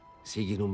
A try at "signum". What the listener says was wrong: He also says siginum, and that's pretty funny sounding. The GN ought to be more like signum, and I talk about this in the GN video. Signum.